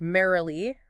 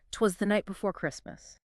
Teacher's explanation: the four most common ones is the dactyl dactyl which is one stress syllable followed by two unstressed ones